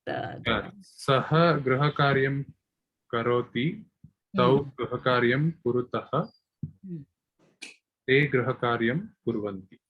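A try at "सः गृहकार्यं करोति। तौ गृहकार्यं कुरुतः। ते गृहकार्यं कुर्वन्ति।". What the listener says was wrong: Samyak. Good.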